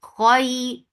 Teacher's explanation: Kha is heavy. You're lifting your tongue up to make kha heavy, but you're not circling your lips at all.